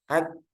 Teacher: Nah, itu kan kelihatan ya kalau rapat kaf sama kaki ku ak itu rapat juga jadi macet kan suaranya. Ak setelahnya itu udara bukan bukan suara lagi. Ak. Nah, ketika dilepas itu udaranya bukan suara.